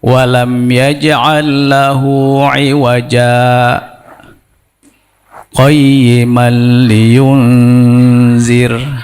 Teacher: Ya gitu, sakta tuh. Jadi berhenti sejenak tanpa ngambil nafas.